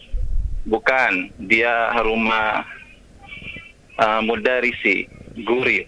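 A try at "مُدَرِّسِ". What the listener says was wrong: Nah, mudarisi atau mudarrisi?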